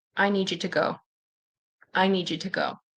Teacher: So the D and the Y can turn into J.